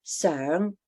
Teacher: it's simply just the mid-rising second tone